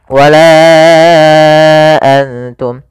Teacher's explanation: hamzah yang datang setelah huruf mad, maka panjangnya yaitu 4 harokat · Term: mad jaiz munfasil